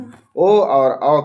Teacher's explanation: ओ और औ का उच्चारण स्थान कंठ और ओष्ठ है।